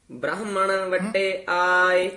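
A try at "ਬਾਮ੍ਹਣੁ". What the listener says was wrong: ਬਾਹਮਣ ਬ੍ਰਾਹਮਣ ਰਾਰਾ ਨਹੀਂ ਹੈ ਹੇਠਾਂ। ਬਾਹਮਣ ਵੱਟੇ ਆਏ।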